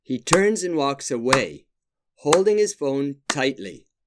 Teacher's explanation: 4 strong beats turns away, holding tightly.